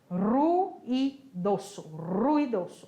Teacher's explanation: O R, não importa se está no início, no meio, sozinho ou com 2 R's, ele sempre vai ter o som vibrante